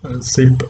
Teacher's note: the tongue is coming very close to the teeth but it does not touch there so the air escapes through that narrow passage